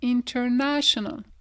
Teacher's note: Ici on a le shun, mais après il y a le AL. Et l'accent tonique, il va quand même être avant le shun.